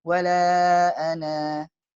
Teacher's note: Ketika waqaf dibaca panjang nunnya.